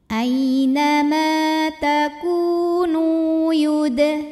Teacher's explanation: Dal sukun qalqalah sughra karena huruf qalqalahnya sukunnya asli dan ada di tengah bacaan. Dibacanya memantul dengan pantulan yang kecil, dialirkan, jangan ada jedanya ya.